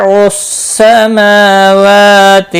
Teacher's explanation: میم اور واو دونوں کے اوپر کھڑی زبر ہے، ایک ایک الف کے برابر کھینچ کر پڑھیں گے۔ لام ساکن کو ہلانا نہیں اور را ساکن سے پہلے زبر ہے اس لیے پر پڑھا جائے گا۔